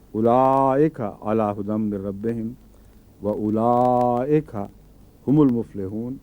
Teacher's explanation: تو حمزے نے لام الف لا کو لمبا بنا دیا